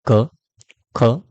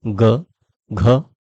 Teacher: क और ख इनमें हमारे कंठ में वाइब्रेशन नहीं होता है बल्कि उनके बाद की जो ध्वनियां है ग घ और अंग इन तीनों में वाइब्रेशन होता है